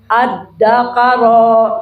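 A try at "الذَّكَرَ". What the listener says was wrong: Kafnya jangan tasdid. Az-zakara.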